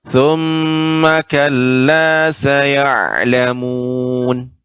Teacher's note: Kalla ini agak dipanjang sedikit, agak ditekan, Nek.